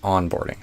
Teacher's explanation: So I put the stress on the on instead of the board.